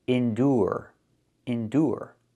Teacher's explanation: With endure the ure makes a sound. The long oo like food. Oo plus the r.